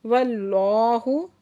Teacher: वल्लाहु इसमें जलाला से पहले ज़बर है तो इसमें जलाला को पुर करके पढ़ेंगे और खड़ा ज़बर भी है, 2 हरकत खींच के पढ़ेंगे